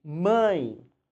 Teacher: Embora termine com E, o som é de I. Mãe. Então, isso é um ditongo.